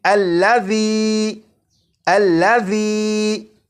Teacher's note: اسی طرح اس لفظ میں ذال ہے، اور آپ نے اگر ذال کی بھی بھرپور پریکٹس کر لی تو آپ کو معلوم ہوگا کہ ذال کو سی ٹی کی آواز کے بغیر پڑھنا ہے